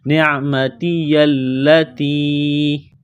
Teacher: لام کے اوپر تشدید ہے تو لام کو دبانا ہے، سختی کرنی ہے